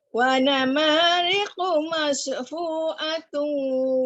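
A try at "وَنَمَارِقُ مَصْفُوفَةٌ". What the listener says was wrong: Wanamariqu mas. Jaga sad, jangan dimuncungkan. Wanamariqu mas. Besarkan ya. Sad tu. Wanamariqu masfufatun.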